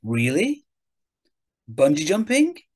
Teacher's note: you can repeat what you hear back as a question using a rising intonation